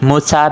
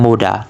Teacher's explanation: voiceless sounds become voiced, typically between vowels like muta become muda.